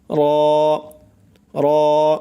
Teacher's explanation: জিহ্বার আগার পিঠ মানে জিহ্বার মাথা যে আছে সেই মাথার পিঠ তার বরাবর উপরের তালুর সঙ্গে লাগাইয়া উচ্চারণ হবে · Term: মোটা করে র